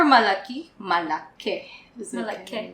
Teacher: No, so sometimes speakers, when it comes to everyday conversations, for words that end with an I, they tend to switch it to an E.